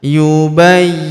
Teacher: Huruf Y kita tahan dan kita tekan karena terdapat tanda tasdid di atasnya